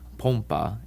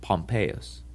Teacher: the length of the O is the difference between the words Poma and pompus